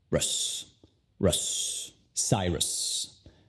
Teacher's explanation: No es enfatizada, entonces la vocal, la U, se convierte al sonido schwa.